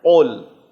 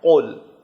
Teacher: زبان کا آخری حصہ جو حلق سے پہلے ٹونسل سے نزدیک ہے اسے اوپر تالو پر لگانا ہے اور موٹا کر کے پڑھنا ہے، قول، باریک نہیں پڑھنا ہے، کل نہیں پڑھنا ہے، قول۔ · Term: دو نقطے والا قاف